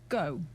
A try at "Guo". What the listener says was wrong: Well, you're not saying... Silent. You can't have a silent U. Silent U. Gyor.